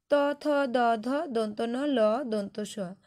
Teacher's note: এদেরকে বলা হচ্ছে অগ্র দন্তমূলে উচ্চারণ স্থান এবং এদের দন্ত বর্ণ বলা হয়।